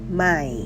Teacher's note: It is also a rising tone, so your pitch should go up at the end.